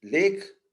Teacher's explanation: lake is the clear L sound in the beginning